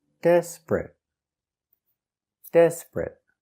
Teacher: two syllables the stress is on the first syllable